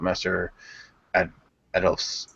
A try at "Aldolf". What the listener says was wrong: It's Aldolf. For a while there, it sounded like you're saying Master Adolf.